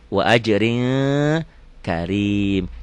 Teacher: Wa ajrin ini ikhfa. N-nya jadi eng. Wa ajrin, rin kan ujungnya N.